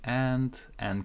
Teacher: n is very strong it's actually canceling this D as well so this whole thing sounds like n so it's like a longer n